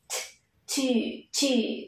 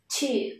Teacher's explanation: Ở đây các con nhớ là chúng ta không phát âm giống như âm tờ trong tiếng Việt nhé, mà nó sẽ là một âm vô thanh và bật hơi t